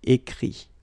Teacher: Remember that phonetically this final T doesn't exist. Okay? So the sound will be only this I.